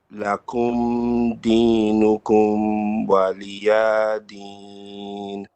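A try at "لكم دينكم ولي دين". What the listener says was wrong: Okay, don't stretch too long on the meme. Don't say lakum. This is only one. We say it only like a short bit. Waliya is short.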